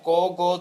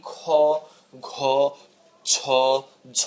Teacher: উচ্চারণের সময় তুমি কোন হ এই একটা বাড়তি বাতাস দিচ্ছ না যেটা তুমি খ ঘ ছ ঝ ইত্যাদি দেওয়া উচ্চারণ করার সময় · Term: অল্পপ্রাণ